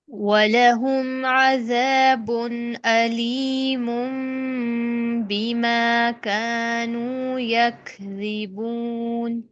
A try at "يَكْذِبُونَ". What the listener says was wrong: توسط لائیں گے مد عارض میں. اور یک یہ ہمس نہیں ہوتی ہے کاف کی ہمس ہوتی ہے شدت والی. کاف میں شدت ہے نا، رخوت تو نہیں ہے. اگر ہم رخوت رکھیں گے نا تو بنے گا یک.